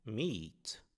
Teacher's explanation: mas sim meet, ou seja, um i alongado · Nós não pronunciamos mate, como aqui em great, mas sim meat, ou seja, um I alongado. Mesmo tendo o encontro de E com A, como na palavra great, a palavra meat tem uma outra pronúncia.